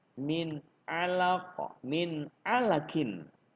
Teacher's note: Huruf nun bertemu dengan ain itu harus dibaca izhar, jelas.